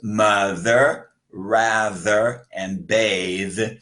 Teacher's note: Th is voiced. That means you cannot whisper it. You use your voice when you say the sound of the. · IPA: /ð/